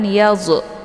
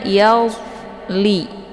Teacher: cara bacanya zo ini dialirkan saja, tidak boleh dibaca pantul. Jangan yalzu keluar bunyi zo, ya, tapi dibacanya yalli, ya.